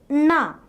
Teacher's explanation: In the production of this sound, the tongue tip is curled back touching the palate, thereby making a closure of the air passage.